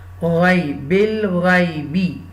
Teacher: this ghain zabar gha will connect with the ya sakina. This is the haruf leen, ya leen.